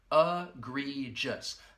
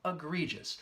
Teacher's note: this word has 3 syllables and the first and third syllable will have that schwa sound